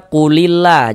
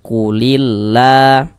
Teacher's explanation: lam jalalahnya ini kita baca tipis, kita baca tarkik. Sehingga ini kita baca qulillah seperti itu.